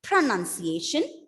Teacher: The stress is given on the first syllable.